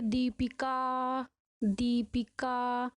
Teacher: last वाले स्वर में 2 मात्रा से भी अधिक समय लग रहा है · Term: प्लुत स्वर